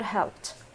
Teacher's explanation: We pronounce it ED like T sound if the verb ends in voiceless sounds, such as the sound of this consonant, S, CH, or SH, K, P, or F.